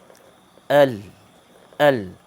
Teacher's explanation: Huruf lam ini, apabila kita sebut, dia adalah tepi hujung lidah ditekan pada gusi gigi depan bahagian atas